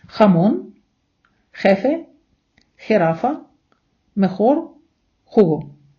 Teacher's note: вона завжди читається як наша х незалежно від наступної голосної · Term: хота